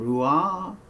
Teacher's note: the most pure h sound that we hear in rua that is really just this breath